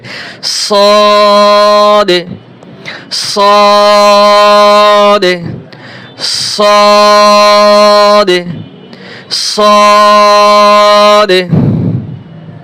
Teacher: সদ মোটা হবে এবং 4 আলিফ টান হবে